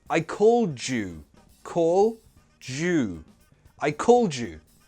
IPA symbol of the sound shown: dʒ